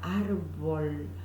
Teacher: Yo digo árbol, el fonema A con la vibrante más la B larga, es decir, no la labiodental, sino un sonido mucho menos fuerte que la V corta